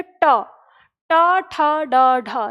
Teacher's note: जैसे आप ट का उच्चारण करेंगे तो आपकी जीभ जिस स्थान को छूती है मुड़कर, वही स्थान क्या कहलाता है? मूर्धा कहलाता है।